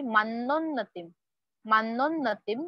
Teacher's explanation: double न is there जैसे अन्न वर्ड में हम डबल न बोलते हैं